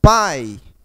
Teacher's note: partiu primeiro da vogal para depois a semivogal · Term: ditongo decrescente